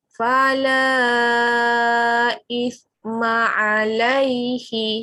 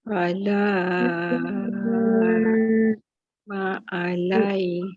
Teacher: Kemudian kita tengok mat jaiz mufasil sama juga. Okey, mat jumpa dengan hamzah tapi kali ini berlaku dalam 2 kalimah ataupun 2 perkataan. Okey, kita baca kali ini dengan kadar 5 harakat.